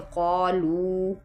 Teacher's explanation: वाओ साकिन है और वाओ से पहले पेश लगी हुई है तो इसको लंबा करेंगे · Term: हरूफ़ मद्दा